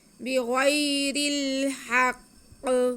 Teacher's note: غین حروف مستعلیہ میں سے، اس لیے ہم اس کو منہ گول کر کے تھوڑا موٹا کر کے پڑھیں گے